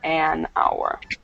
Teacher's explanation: consonant but even though there's a consonant there's a vowel sound so hour the H is silent so instead of a hour it's an hour okay any questions